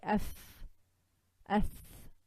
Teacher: Rakhawah means the running of sound. So there's no blockage. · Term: loose letters